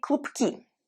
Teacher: You hear how the word klubok, B, is prominent and it's voiced, but in the word klubki, it's devoiced because B and K paired together, the K goes after the voiced B, and it makes it devoiced because K is devoiced.